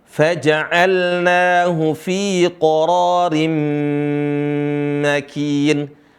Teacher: Cuma perhatikan di situ ditahan mimnya, mim bertasydid.